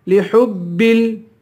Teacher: ہا کو با سے ملا کر با کو سختی کے ساتھ جما کر پڑھیں گے. لِحُبِّ، پھر دوبارہ با کو لام سے ملائیں گے.